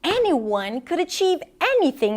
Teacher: there's like this gradual escalation in her pitch, regardless, until she gets to that next operative word, regardless, that's even higher in pitch, of the color of their skin, right?